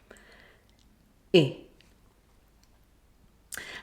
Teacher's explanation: Tongue is slightly curved towards the middle of the roof of the mouth. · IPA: ɪ